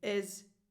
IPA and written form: 'ɪz (is)